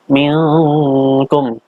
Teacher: Minkum, ini dibacanya samar-samar, yaitu ikhfa, seakan-akan mau ke huruf ka